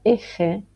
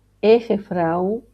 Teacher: en este caso sí suena la H entre las dos vocales, como una J española